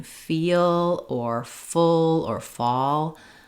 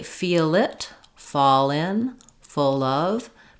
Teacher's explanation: that L linking to the next sound typically is much easier to say than the L at the end